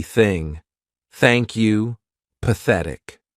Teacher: let's go on to the unvoiced th sound which means our vocal cords are not going to vibrate